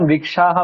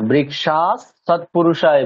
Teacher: বলে দিলাম বৃক্ষাহা বলার দরকার নেই কি বলতে হবে বৃক্ষাৎ সৎপুরুষ বিসর্গের জায়গায় দন্তসকার যেহেতু বিসর্গের পরে দন্তসার আছে তাহলে ঐরকম বলতে হবে